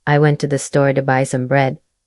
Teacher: For example, in the sentence, "I went to the store to buy some bread," the stress is on went, store, and bread, while the words to the and some are said very quickly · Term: stressed timed language